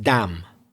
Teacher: you don't pronounce the final N